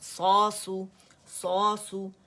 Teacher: صاد موٹا ہے اور اس کو دھما کے ساتھ ادا کریں